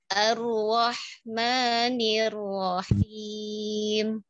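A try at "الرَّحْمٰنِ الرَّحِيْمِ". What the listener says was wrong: Ya, Masya Allah. Bacaannya mumtaz. Bagus Ibu.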